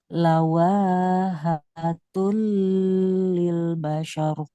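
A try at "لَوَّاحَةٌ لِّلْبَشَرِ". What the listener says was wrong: Nah, wawunya ada tasdid Bu di situ. Tekan ya. Lawahatul.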